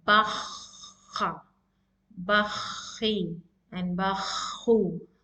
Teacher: When you blow the air from deep down your trachea towards your throat, the air is blocked near the root of your tongue. When you touch the root of your tongue with the palate, it's the makharaj of kha is there.